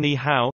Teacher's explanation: when two third tones appear consecutively, such as in ni hao, hello, the first syllable is pronounced with the second tone